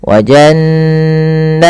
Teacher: Wa jannatin alfafa, nunnya jelas, maaf, nunnya dibaca dengan gunnah, tahan. Wa jannatin, tin jelaskan kasrahnya sempurna karena bertemu setelahnya hamzah. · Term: izhar halqi